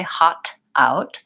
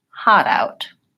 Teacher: the T sounds we often use this flap T as well when the next word starts with a vowel and the first word ends with the T I use a flap to connect them so I don't say hot out I say hot out I